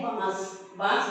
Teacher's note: यहां पर नाक और मुंह दोनों की क्रिया हो रही है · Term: अनुनासिक